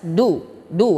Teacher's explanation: huruf Dal Dal disini ujung lidah kita menempel kepada pangkal gigi seri atas doo-doo harokatnya juga adalah bom mah sifatnya juga adalah syiddah suduh